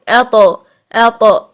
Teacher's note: अब ता के लिए साकिन हालत में आवाज बंद हो जाती है, ठीक है, अत, हमने कहा था पहले आवाज को लॉक करें और फिर सांस को जारी कर दें, ठीक। लेकिन तौ के लिए आवाज में कलकला होता है, सांस बंद हो जाता है